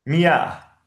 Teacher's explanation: it's not kh, it is more from the throat.